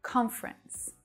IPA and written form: 'kɒnf rəns (Conference)